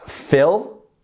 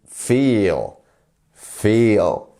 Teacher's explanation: So that's fill with a quick I. And then we have the long I, which is feel.